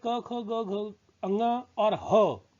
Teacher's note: कंठ और जीभ का निचला भाग, ठीक है, ये जुड़ता है तो कंठ से उच्चारण होता है